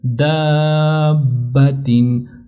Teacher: الف مدہ کو بھی ہم نے کھینچا اور با کے اوپر بھی تشدید اچھی طرح سے کی